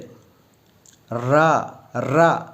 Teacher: அடுத்தது நாவின் நுனி மேல் அன்னத்தின் முதல் பகுதியை தொடும்போது ரா அப்படிங்கிறது தொடுது, ரா அப்படிங்கிறது உச்சரிக்கிறோம். நாவோட நுனி மேல் அன்னத்தின் மையப்பகுதியை உரசும்போது